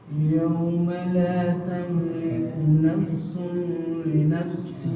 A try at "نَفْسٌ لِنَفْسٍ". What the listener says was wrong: نفس لنفس نفس لنفس کے اندر نون نہیں آنا نفس نہیں کرنا نفس لنفس